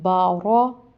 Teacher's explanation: با پڑھی زبر با، را پڑھی زبر را، بارا، اس چیز کا خیال کرنا ہے کہ را موٹا کرنا ہے، با موٹا نہیں آواز نکالنی